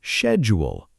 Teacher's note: Americans say schedule with a hard K sound. >> And British speakers say schedule with a soft SH sound at the beginning.